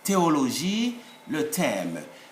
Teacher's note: there is simply no aspirate or aspirated H in French. All the H are to be omitted in sound, but they should be there in spelling. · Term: silent